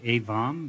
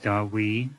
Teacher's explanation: they pronounce it something a little bit more like avam but in tibetan we don't have a v so V's get turned into W's